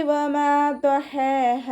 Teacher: മീമിൻ്റെ കൂടെ അലിഫ് മദ് വന്നു, 2 കൗണ്ട് നീട്ടിക്കൊടുക്കുക